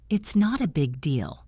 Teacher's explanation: Listen to the emphasis on big.